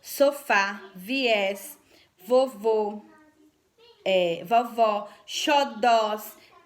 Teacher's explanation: Então, o acento está na última sílaba da palavra. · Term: oxítonas